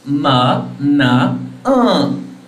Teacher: All the nasals are voiced, your vocal folds vibrate. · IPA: /m/, /n/, /ŋ/